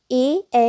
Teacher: ए ए वर्ण का उच्चारण स्थान क्या है कंठ तालव्य ए ए वर्ण कंठ तालव्य कहलाते हैं